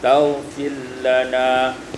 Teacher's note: idghamur ra fil lam, diidghamkan ra pada lam